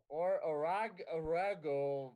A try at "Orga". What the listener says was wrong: you don't need to add extra vowels in there it's orga